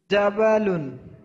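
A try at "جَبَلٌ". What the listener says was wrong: হ্যাঁ তো লাম, জাবালুন একটার মধ্যে টান হয়ে যাবে না, জাবালুন জাবালুন মানে এরকম পড়তে হবে, জাবালুন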